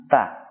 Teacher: Dan huruf ta ini mewakili huruf-huruf yang keluar dari lidah. Huruf ta keluar dari ujung lidah dengan pangkal dua buah gigi yang atas. Maka nafas kita arahkan ke pita suara, kemudian ujung lidah kita arahkan ke pangkal dua buah gigi yang atas, maka akan muncul suara ta. · Dan dari sisi sifat-sifat huruf, cara bagaimana huruf ta ini keluar dari makhrajnya, yang pertama dari sisi nafas, huruf ta ini adalah huruf yang nafasnya terlepas · ta ketika kita mengucapkannya ada desis yang terlepas dari pengucapannya. Kemudian dari sisi suara, huruf ta sama dengan hamzah dan ba, suaranya tertahan.